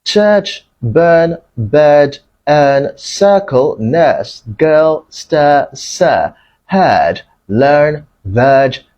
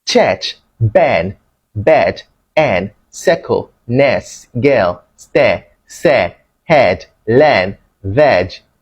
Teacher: Ghanaians will pronounce the central elongated vowel as the mid-open front vowel eh.